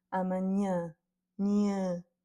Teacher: Et ici, on a le cas avec plusieurs A, et donc comme c'est le A avec le tilde qui va avoir l'accent, et que ce tilde en plus donne un son nasal, ça apporte une nouvelle sonorité au A qui n'est pas encore la même que le A ouvert d'avant. Là, c'est vraiment un A qui est très nasal.